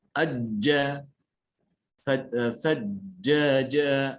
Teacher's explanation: Tengah lidah itu menutup ke lahat mulut. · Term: huruf jim